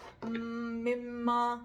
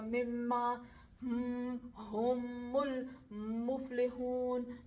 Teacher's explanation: میم میں تھوڑا سا ناک کا مخرج بھی آتا ہے, ناک کی حرکت بھی ہوتی ہے